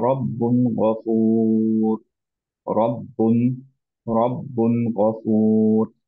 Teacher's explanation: রব্বুন ধরে রাখবো না, কারণ এখানে কোন রকম আমাদের গুন্না নাই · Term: ইজহার